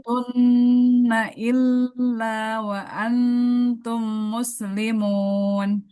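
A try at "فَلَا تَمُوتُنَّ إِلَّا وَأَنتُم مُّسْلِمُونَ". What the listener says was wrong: Untuk bacaannya, panjang pendeknya sudah sangat bagus ya. Hanya hurufnya huruf tebal sod. naikkan pangkal lidahnya so. Nah, so, sli, so.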